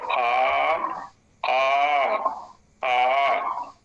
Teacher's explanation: आ प्लुत में मात्रा काल बढ़ जाएगा, स्थान वही रहेगा, प्रयत्न वही रहेगा, जो उसका उच्चारण क्रिया का काल है वो बढ़ गया, एक मात्रा और अधिक हो गया।